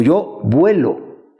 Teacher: La O estaba presente originalmente, pero se transforma en el diptongo UE para decir yo vuelo